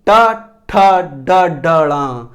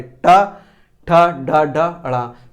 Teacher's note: ये मूर्धा से इसका उच्चारण करेंगे, ये मूर्धन्य व्यंजन हो जाएंगे।